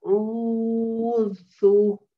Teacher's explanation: The second letter is where we emanate it from the wasat al-Halaq, which is the middle part of your throat